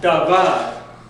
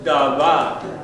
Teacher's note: the emphasis comes on the last syllable